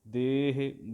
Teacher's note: ਦੱਦੇ ਨੂੰ ਲਾਵਾਂ ਦੇ ਲੰਬਾ ਕਰਕੇ, ਹਾਹੇ ਸਿਆਰੀ ਹੇ ਸੰਕੋਚ ਕੇ, ਦੱਦੇ ਲਾਵਾਂ ਦੇ, ਹਾਹੇ ਸਿਆਰੀ ਹੇ, ਦੇਹ ਬੁਝਾਈ।